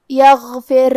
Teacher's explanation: کلمت یغفر حرف الغین کی ادائیگی حلق کے اوپر والے حصے سے ہے. غین حروف التفخیم میں سے ہے تو ہمیں یہ حرف کو موٹی آواز میں پڑھنا ہے. آخری میں یہاں را کا حکم ہے ترقیق.